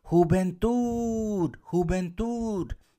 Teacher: donde sube mi voz Es aquí en este caso en t